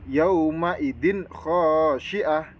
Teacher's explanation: Nah, di kata atau di lafadz yauma idin khasyiah ini ada tanwin bertemu dengan huruf kha ya. Jadi itu harus dibaca idhar halqi, yang bacanya itu jelas tanpa dengung.